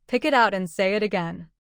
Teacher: Let the consonant at the end of pick connect smoothly into it. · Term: linking